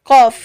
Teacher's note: Ketika membaca qaf, pangkal lidah ini pasti terangkat ke atas karena sifatnya yaitu isti'la. Dari huruf qaf ini pasti terangkat.